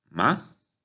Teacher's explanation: Segundo tono es de abajo hacia arriba.